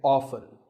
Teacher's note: the more common pronunciation is with the t silent